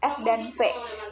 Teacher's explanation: dihasilkan dengan mempertemukan gigi atas sebagai titik artikulasi dan bibir bawah sebagai artikulator yang termasuk ke dalam konsisten konsonan ini adalah F dan V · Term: konsonan labiodental